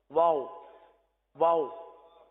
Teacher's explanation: واو میں ہونٹ گول ہوتے ہیں. واو ایک ایسا حرف ہے جو اکثر مجہول کر دیا جاتا ہے، پتہ بھی نہیں چلتا.